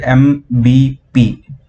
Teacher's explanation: when both the lips are closed together that is when we can pronounce or give the sound m b p